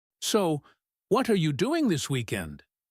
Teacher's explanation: used at the beginning of a sentence with a slight rising intonation